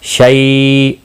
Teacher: یالین ہے، تھوڑا نرمی کے ساتھ کھینچ کر ادا کریں گے